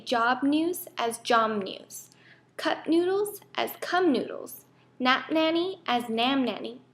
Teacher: changes to the clear M sound, because of the influence of the next initial nasal consonant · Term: nasalization